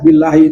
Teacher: billahi itu lafzul jalalah dibaca tarqik karena ada huruf ba berharakat kasrah